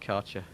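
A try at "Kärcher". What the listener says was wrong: Yeah, that's wrong pronunciation, buddy. Yeah, because you guys don't do the A with the umlaut on it. It's German and it's pronounced Kercher.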